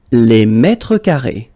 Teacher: I just wanted to put well, the singular form and the plural form just for you to know whether it's masculine or feminine at the singular, and then just to check and to remember that you notice that at the plural form you will have to put this final S, but then you don't pronounce it